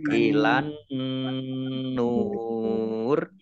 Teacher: Nun tasdid dibaca gunnah atau mendengung ditahan 2 harokat.